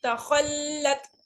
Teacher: لام پہ ذرا رکیں گے چونکہ وہ مشدد ہے